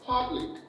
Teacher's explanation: public is stressed on the first syllable